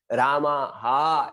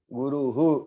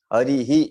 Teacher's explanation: तो ये ह की लाइन के जैसा उच्चारण होगा विसर्ग का।